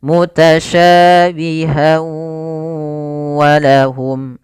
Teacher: Idgham disertai dengan gunnah, maka masukkan tanwin pada huruf ha, masuk kepada huruf waw dan ditahan suara wawnya. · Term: idgham bi gunnah